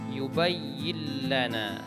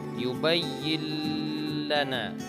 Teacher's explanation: tetapi sepeda yang membedakan antara Idgham Bighunnah dengan Idgham bilagunnah bahwa di idgham bilagunnah ini tidak dibaca secara berdengung artinya dibaca secara jelas